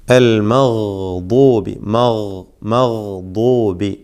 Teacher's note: ഒരു ഭാഗം, ഒരു സൈഡ് മൊത്തത്തിൽ നീണ്ടു കിടക്കുന്ന ആ ഭാഗം മുഴുവനായിക്കൊണ്ട് മേലെ അണപ്പല്ലിനോട് ചേർത്തുകൊണ്ടാണ് ദ്വാദ് ഉച്ചരിക്കേണ്ടത്. മേലെ അണപ്പല്ലിനോട് ചേർത്ത് വെച്ചുകൊണ്ട് ദ്വാദ് ഉച്ചരിക്കണം. ഇത്ബാഖിൻ്റെ അക്ഷരമാണ്, ഇസ്തിഅലാഇൻ്റെ അക്ഷരമാണ്, തഫ്ഖീം ചെയ്തുകൊണ്ട് ഉച്ചരിക്കേണ്ട ഹർഫാണ്.